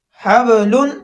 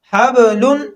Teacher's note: یہاں با پر قلقلہ ہوگا